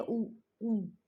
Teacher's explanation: पश्चिम में जीभ जो है किस किस में होती है, ऊ ऊ, पीछे की ओर जाती है जीभ, या फिर पीछे से आती है आवाज।